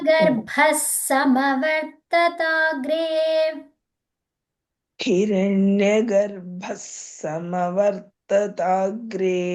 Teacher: ఇక్కడ విసర్గ ఉంది కదా దాన్ని స లాగా చెప్పాలి స అంటే స కి స వత్తు లాగా వచ్చేస్తది అది హిరణ్య గర్భసమవర్తతాగ్రే